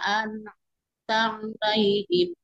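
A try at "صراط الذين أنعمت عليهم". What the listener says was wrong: nah kurang turun kurang turun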